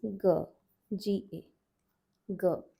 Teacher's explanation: This is G, G-A, G, non-aspirated. Next letter, Gh, Gh, this one's aspirated.